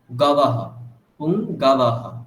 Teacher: পুংগবহ, ওটা অকার উচ্চারণ স্পষ্ট হবে। পুংগাবাহ, আপনি বলছেন পুংগবহ, মানে ওকার টাইপের চলে আসছে, সেটা হলে ভুল।